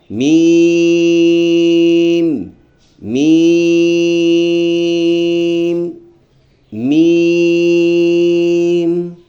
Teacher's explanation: میم میں ہونٹوں کا وہ حصہ لگتا ہے جو تھر والا حصہ ہے، اور تھوڑا نسبتاً نرمی کے ساتھ لگ کے یہ لفظ ادا ہوگا۔ ایک الف کے برابر ہم نے اس کو لمبا کر کے پڑھنا ہے، ایسے بن جائے گا میم میم میم۔